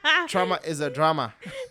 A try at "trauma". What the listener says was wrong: It sounded like you said tremor.